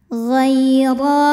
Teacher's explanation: ro dibarisi fathah maka cara membacanya adalah ditebalkan pangkal lidah naikkan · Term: tafkhim